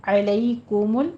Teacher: علیکم ضمہ ہے، ہونٹ گول کیجیے اور لام کو بھی جھٹکا نہیں دینا